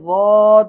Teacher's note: زبان کی بائیں کروٹ اوپر کی داڑوں میں اندر کی طرف ٹکرائے گی تو واد ادا ہوگا